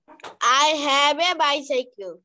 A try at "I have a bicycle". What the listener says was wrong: Very good, কিন্তু তুমি বারবারই এ বলছো কেন? আ হবে।